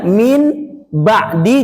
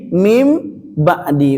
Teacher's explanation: Menukar apa? Bunyi n jadi bunyi m, bunyi n jadi bunyi m. Yang tadinya min ba'di jadi mim ba'di. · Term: iklab